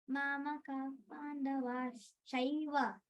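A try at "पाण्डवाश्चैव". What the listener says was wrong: Sh also should come. Mamaka Pandavash-chaiva. Vash-chaiva. So there is a stress.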